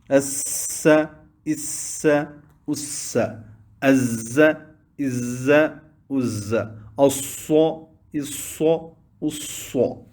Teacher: ان حروف کے ادا کرتے وقت ایک آواز تیز سیٹی کی طرح نکلتی ہے جس سے یہ حروف یعنی زا، سین اور صاد سیٹی کے ساتھ پڑھے جاتے ہیں۔ · مراتب صفیریہ، سب سے زیادہ سین میں، اس کے بعد زا، اور سب سے زیادہ کم یعنی سب سے کم صاد میں سیٹی کی آواز نکلے گی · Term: حروف صفیریہ